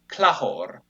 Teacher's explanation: And then in Vonsa, which is another of these academic languages, I guess you could say, there is another change where the stress stays the same, and so o, the initial o is lost, and then the k becomes a ch between vowels, and then eventually just becomes h